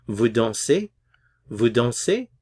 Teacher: Remember to adjust your intonation to rise a little bit towards the end.